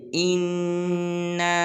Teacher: تو آج کے جو ہمارے سبق کا پہلا حرف ہے وہ ہے اِنَّا، پہلا حمزہ ہے پھر اس کے بعد نون ہے، نون مشدد ہے تو حمزہ کو نون کے ساتھ ملائیں گے، جیسے اِنَّا، انہ کے اوپر مد بھی ہے اور انہ پر غنہ بھی کریں گے، جیسے اِنَّا۔